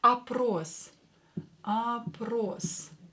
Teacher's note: all will be pronounced as ah because it's not stressed here